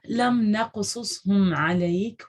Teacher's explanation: صرف قاف پہ کلکلا ہے آپ کے، ٹھیک ہے، صاد پہ آپ کا کلکلا نہیں ہے